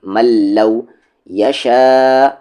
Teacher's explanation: نون ساکن کو بالکل نہیں پڑھیں گے